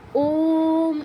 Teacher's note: ওম হচ্ছে প্লুত উচ্চারণ করতে হয় মানে একটু দীর্ঘ সময় নিয়ে উচ্চারণ প্লুত উচ্চারণ আমরা উচ্চারণের ক্লাসে জেনেছিলাম এটা ওম একটু দীর্ঘ সময়